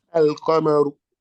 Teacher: No, we are not inserting the lam. We're not assimilating the lam into the qaf. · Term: moon letter